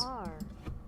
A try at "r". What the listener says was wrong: not English R, please. R. Oh, it is rolled. The R is rolled. So the single R in Spanish is rolled, interestingly enough.